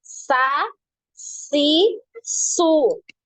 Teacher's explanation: Jadi tidak langsung Sas su gitu ya tapi dialirkan ya dialirkan suaranya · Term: aliran suaranya